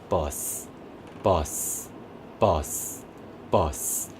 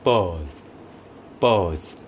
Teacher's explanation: 근데 buzz, buzz 이거는요, 뒤에 유성음이 오기 때문에 앞에 있는 이 단어는 조금 더 길어집니다. 앞에 있는 모음이 더 길어져요. 조금 더 길어졌다가 뒤에 유성음은 성대를 울려주는 소리이기 때문에 말하자면 호흡 소리가 아니죠.